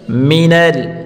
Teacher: نون کو لام کے ساتھ ملا کر پڑھیں گے۔